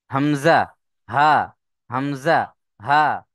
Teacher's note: হালাক বা কণ্ঠনালীর শুরু হতে উচ্চারণ হয় হামজা হা